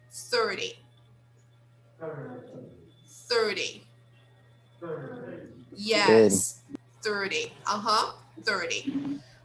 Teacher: is not stressed we stress the first part okay in uh in the tens we don't stress the second syllable we stress the first